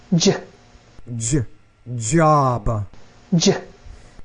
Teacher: We call these palatal consonants